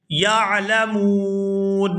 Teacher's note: لو کانوا یعلمون، یہاں پر وقف کریں گے تو وقف کی صورت میں نون جو ہے یہ ساکن ہو جائے گا